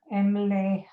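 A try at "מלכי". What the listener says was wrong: Malche. Yeah, you switched it. You did the vowel before the letter, but that's very common. Malache.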